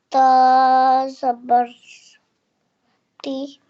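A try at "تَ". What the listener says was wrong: Zabar always makes a sound. A. Ta zabar.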